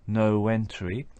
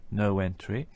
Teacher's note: we can hear a linking W between the word no and entry